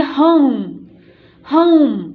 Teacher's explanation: होम बोल के देखिएगा, औ, आपको औ साउंड सुनाई देगी, तो ह और औ और म, होम।